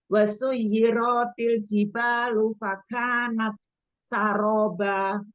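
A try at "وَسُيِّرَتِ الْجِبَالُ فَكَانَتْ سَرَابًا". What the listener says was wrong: wasuyiratil. Ro-nya nggak panjang, Bun. Wasuyiratil.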